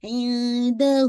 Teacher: نون ساکن ہے تو نون ساکن کے بعد دال ہے، اخفا کیجیے گا لائٹ